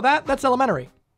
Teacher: We kind of just skip over that middle T and pretend it's not there.